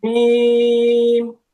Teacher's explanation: দুই ঠোঁটের শুকনো জায়গা হতে উচ্চারিত হয় মিম